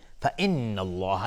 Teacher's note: لفظ جلاله مفخم هست چون قبلش فتحه اومده